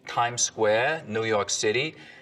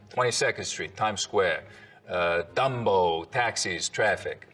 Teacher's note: the tongue tip hits the teeth or close to them on td and n sounds instead of you know a little further back